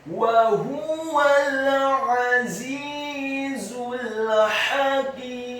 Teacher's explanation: Kata wa huwal, huruf wawunya dibaca fathah satu harokat, huruf ha-nya dibaca tafkhim tebal dhammah satu harokat, dan huruf wawu yang kedua dibaca fathah satu harokat, kemudian huruf lamnya dibaca sukun, atau huruf wawunya cukup dibaca fathah satu harokat karena setelahnya langsung disambung ke huruf lam yang sukun.